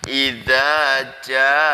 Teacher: jimnya itu dibaca panjang 5 harokat atau 2,5 alif. Jadi 1 alif itu 2 harokat. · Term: mad wajib mutasil